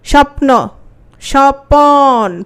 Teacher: স্বপ্ন স্বপন প এর সাথে একটা অ আসছে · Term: স্বরভক্তি